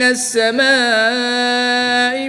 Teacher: الف مدہ کے بعد حمزہ اسی کلمے میں آ گیا تو یہاں پر مد متصل ہوگی, 3 سے 5 عدد تک کھینچ کر پڑھیں گے